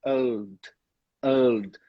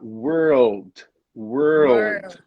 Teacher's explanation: Então, a primeira parte é essa, were, were. E aí vem o rolling L, que a gente tem que dobrar a língua para trás, que é o old, old.